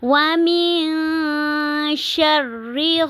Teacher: نون ساکن کے بعد شین آ رہا ہے حروف اخفا میں سے، تو یہاں پر اخفا ہو رہا ہے۔